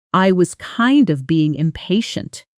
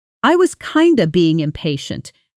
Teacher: kind of collapsing almost entirely into kinda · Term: connected speech